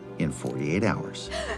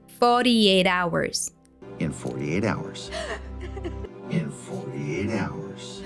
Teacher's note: The T sound stands between the two vowels and turns into a flap T